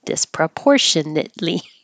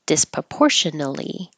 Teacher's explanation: tiny little difference is saying the tea and stopping the air flow or not having the tea and not stopping the air flow